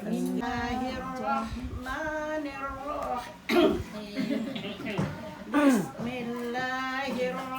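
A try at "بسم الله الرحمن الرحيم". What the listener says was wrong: Jangan kayak putus itu singkat. Bismillahirrahmanirrahim. Kasih taruhnya. Bismillahirrahmanirrahim.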